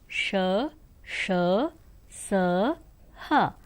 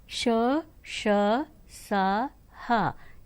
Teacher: ऊष्म व्यंजन श, श, स, ह, इन्हें ऊष्म व्यंजन कहा जाता है। जैसे कि इनके उच्चारण करते समय हवा के रगड़ आने से मुख से गर्मी माने ऊष्मा उत्पन्न होती है